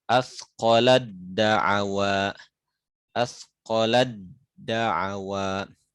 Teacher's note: Jadi taknya diidgham ke dal